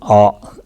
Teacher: First letter, first sound that comes from the root of the throat, A. Deep inside the throat, the A sound originates.